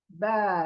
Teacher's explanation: जब पढ़ते हैं मुंह गोल बिल्कुल नहीं होगा, तो बा यानी मुंह खींचा चला जाएगा। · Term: बारीक